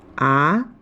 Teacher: the second tone is a rising tone with a pitch value of 35